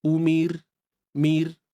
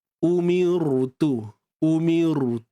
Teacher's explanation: bawah ra mati Kalau sebelum dia baris bawah tuan Puan maka ra ini perlu dinipiskan ra ni perlu dinipiskan macam mana nak nipiskan ro jangan angkat pangkal lidah